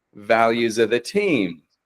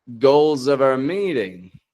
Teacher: S changes to a Z because the sounds around it are vowels. The sounds around it are voiced and that's making it Z like just assimilate to that Z sound.